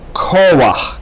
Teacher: you see the accent is on ko, that's why you have that line there, and not koach.